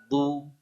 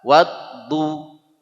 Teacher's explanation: Kalau sulit caranya ujung lidahnya jangan bengkok. Ujung lidah lurus nempel ke langit-langit. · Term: huruf Dhad